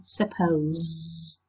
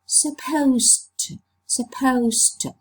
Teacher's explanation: When you are supposed to do something, you say supposed to, supposed to. So you see that the voiced fricative z has become voiceless.